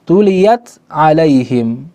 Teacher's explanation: ta makhrajnya di ujung lidah. Ain makhrajnya di tenggorokan. Jauh, sulit untuk dibaca idgham. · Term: izhar